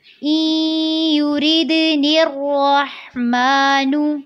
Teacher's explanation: یرید میں را کو باریک رکھنا ہے، دال پہ قلقلہ کرنا ہے اور نیکسٹ جب آپ نون کو را کے ساتھ ملائیں گی تو را کو پر کرنا ہے.